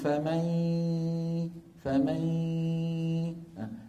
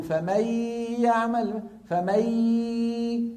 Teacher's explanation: يجب أن يكون صوت الغنة وصوت الياء موجودان وبالنسبة نفسها 50% 50%، يعني لا يكون صوت الياء طاغي ولا يكون صوت الغنة طاغي، 50% 50%.